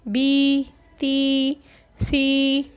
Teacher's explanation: खींच कर बग़ैर झटका दिए मारूफ़ पढ़ना है। · या मद्दा को 1 अलिफ़ के बराबर खींच कर पढ़ते हैं।